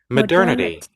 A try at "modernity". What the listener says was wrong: Yes, modernity.